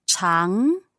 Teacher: No, 长, second tone. Just going up.